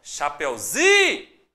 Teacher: a nossa penúltima sílaba é a mais forte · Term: paroxítona